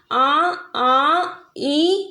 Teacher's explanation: हमारे मुंह से भी हवा निकल रही है और नाक से भी हवा निकल रही है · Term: अनुनासिक स्वर